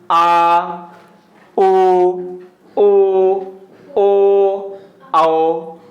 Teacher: ये जीभ के पीछे हिस्से से निकल रहे हैं। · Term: पश्च स्वर